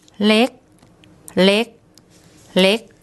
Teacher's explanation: And because the word ends with a K sound, any words end with a P, K or T sound are dead syllables. So we've got low class consonant, a dead syllable and a short vowel, which makes a high tone